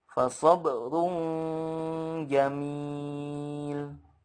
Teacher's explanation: Runja harus ada gunnahnya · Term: gunnah kamilah